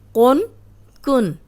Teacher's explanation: یہ موٹا قاف ہے اور یہ باریک کاف ہے